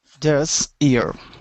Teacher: The S at the end will be a voiceless. So instead of saying this, it is this.